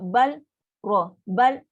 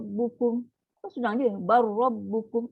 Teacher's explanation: Abaikan lam, terus masuk. Automatik sifat lam, makhraj lam semua hilang.